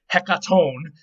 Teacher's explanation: the accent or stress is on the last syllable